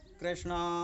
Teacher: दूर खड़े व्यक्ति का नाम पुकारते हैं, जैसे कृष्णा, तो हम वहाँ पर आ, वो लंबा जो बोला जाता है उसमें प्लुत स्वर का प्रयोग होता है